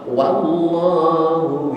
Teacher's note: W dipatah dibaca WA maka bacanya dengan Wa jangan wo